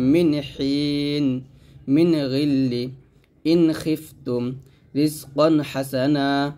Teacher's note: আর এই 6টা হরফ যখন নুন সাকিন তানবিনের পরে আসবে তখন কিন্তু স্পষ্ট করে পড়তে হবে, কারণ ইজহার অর্থ হলো স্পষ্ট করে পড়া, অর্থাৎ গুণনা হবে না, স্পষ্ট করে পড়তে হয়। তো হামজা, হা, আইন, হা, গইন, খ এই 6টা হরফ যখন আসবে তখন স্পষ্ট করে পড়বে। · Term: ইজহার গুণা